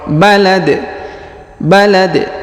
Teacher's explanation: di ujung kita sukunkan sehingga kita baca pantul